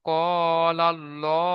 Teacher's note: আল্লাহ শব্দের আগে জবার এসেছে আল্লাহর লামকে পুর করে পড়তে হবে